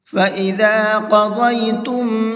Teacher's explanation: قاف کو بھی اور ضاد کو بھی دونوں حرفوں کو منہ بھر کے پڑھیں گے